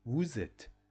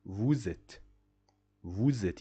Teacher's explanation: So why we say vous êtes? I'm doing the liaison. Why? Because at the end of the first word I have a consonant. At the second word it starts with a vowel. That's why I can do the liaison and I say vous êtes. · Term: la liaison